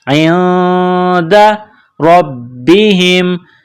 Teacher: نون ساکن کے بعد دال ہے، حروف اخفا ہے تو آواز ناک میں چھپائیں گے